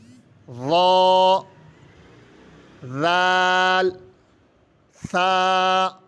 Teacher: نرم حروف پڑھنے کا طریقہ کار یہ ہے کہ جب ہم ان حروف کو پڑھیں گے تو ہم اپنی زبان کی نوک سامنے والے اوپر والے دانتوں کے ساتھ لگا کر پڑھیں گے